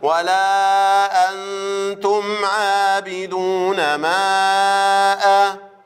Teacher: يبقى هنقول عين فتحة عاء، ألف مد طبيعي حركتين، عاء باء كسرة بي عابي دال ضمة دو، وإحنا خدناها فوق طبعا هي نفسها الآية، عابدو واو مد طبيعي حركتين، نون فتحة ناء عابدون، ميم فتحة ما عابدون ما، ألف مد طبيعي حركتين عابدون ما، هيجي بعديه همزة صار المد الطبيعي مد منفصل أربع أو خمس حركات